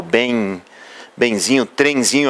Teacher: Lembre-se que eu não estou aqui representando a letra I, mas o fonema IN, que é esse som nasal